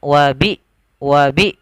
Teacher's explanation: usahakan hamzahnya itu seakan-akan putus